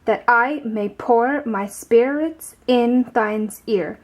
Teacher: Each line has 10 to 12 syllables, which follow a certain pattern. The syllables are arranged in a way where an unstressed syllable is followed by one that is stressed. This is called an iamb.